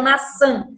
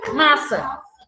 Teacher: o tio ele tem a função de nasalizar a vogal